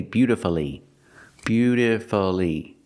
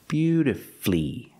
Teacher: put the stress on your first and third syllable